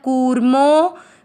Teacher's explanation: आपको मो की मात्रा को लंबा खींचना है